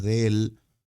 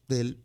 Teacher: Porque del es una contracción por una cuestión fonética. Nosotros decimos de él, se nos juntan estas dos vocales abiertas, entonces lo pronunciamos del y lo escribimos del.